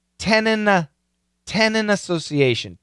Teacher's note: cancel the weak sounds and that's exactly what happens right here this N is a strong sound it cancels the T